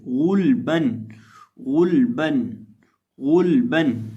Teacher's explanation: غین پیش لام غل، با دو زبر بن، غلبن۔ اب اس لفظ کے اندر ہم غین کو موٹا پڑھیں گے، لام اور با کو باریک پڑھیں گے